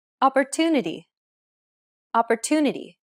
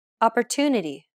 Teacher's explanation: The stressed syllable to in opportunity is pronounced longer than all the other syllables. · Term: stress-timed language